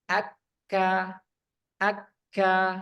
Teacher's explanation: pangkal lidah paling belakang pada posisi menempel langit-langit antara bagian tulang atas dan bagian yang lunak daging, yaitu ke depan sedikit setelah qaf, yaitu kaf.